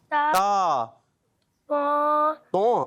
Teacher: زبان کا سیرا اور اوپر کی دانتوں کے جڑ سے ادا ہوتے ہیں